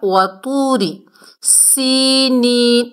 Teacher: را کے نیچے زیر ہے، زیر کی وجہ سے را کو ہم نے باریک پڑھنا ہے · سین کو سختی اور سیٹی سے ادا کرنا ہے، یا ساکن سے پہلے زیر ہے، یا مدہ ہے، اور یہ بھی یا مدہ ہے، دونوں کو ایک ایک الف کی مقدار کھینچ کر پڑھیں گے۔